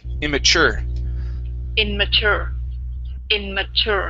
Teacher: The stress is on the end of the word.